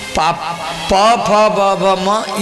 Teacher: ये दोनों होठ जब सटेगा तो उत्पत्ति होगा। उसमें दांत का कोई जरूरत नहीं है।